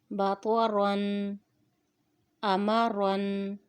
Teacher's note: را کے اوپر جب دو زبر آ جائیں تو اس را کو بھی پر پڑھیں گے